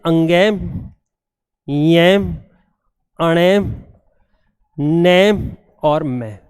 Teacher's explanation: नाक के द्वारा इनका उच्चारण होता है, इन्हें बोलते हैं नासिक्य वर्ण।